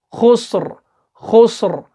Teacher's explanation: ہاں, اور جو ہو رہا ہے نا لاسٹ پہ, یہ ہے پر کی علامت ہے کہ ہم منہ کو گول کر رہے ہیں, یہاں پہ پر پڑھ رہے ہیں, موٹا پڑھ رہے ہیں